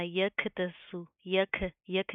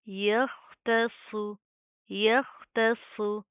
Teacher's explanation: خا کو آپ نے کھے نہیں بنانا